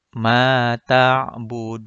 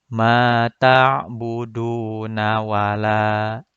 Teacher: Du-nya dipanjangkan dulu, kemudian ditutup dengan huruf nun sukun. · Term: mad arid lis sukun